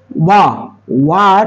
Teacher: ঠোঁট দুটো গোল করে উচ্চারণ হয় ওয়া